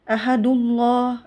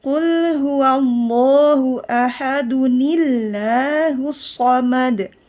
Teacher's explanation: Jadi setiap tanwin bertemu dengan hamzah wasol, maka harus ada huruf nunnya, tidak boleh langsung disambung. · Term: Nun wikoya